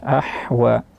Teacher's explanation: Ahwa jangan terganti ke huruf ha, ahwa, tapi dia ha di tengah tenggorokan, wasatul halqi. Ahwa mengalir nafas ha, yaitu hamas.